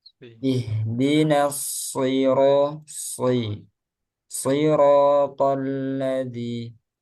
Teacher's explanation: Nah, setiap shad ditebalkan lagi